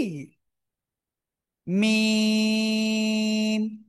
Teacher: চার আলিফ টান হবে · দুই ঠোঁটের শুকনো জায়গা থেকে